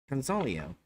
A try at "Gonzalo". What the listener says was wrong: Gonzalo. Now, where'd you get the I sound?